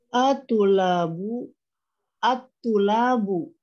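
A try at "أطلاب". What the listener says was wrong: Atulabun. Ayo, atulabun, ini dia tanwin ya.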